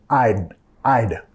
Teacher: Tu lengua acá, tocando las encías superiores. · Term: la contracción